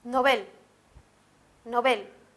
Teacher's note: palabra sería novel novel como pueden ver también va a ser aguda ya que el acento se encuentra en la última sílaba